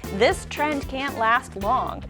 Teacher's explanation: the D at the end of trend and the C at the beginning of can't merge into a different sound altogether